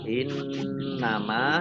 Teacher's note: Kemudian Wa in tawallau, nun sukun bertemu dengan huruf ta, bacaan ikhfa dibaca samar-samar, lamnya dibaca double, ada tasdidnya. In nama nun tasdid dibaca hunnah atau mendengung ditahan 2 harokat